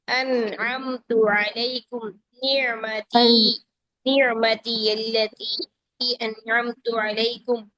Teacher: आइन में ना तो प्रॉपर शिद्दत है और ना ही प्रॉपर तरीके की नरमी है